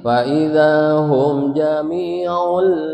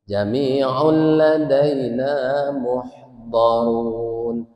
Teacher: Jami'ul ladaina langsung aja masuk ke huruf lam tapi tidak ditahan. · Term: bila gun